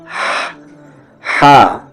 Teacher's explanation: ہا بیچ والے حلق سے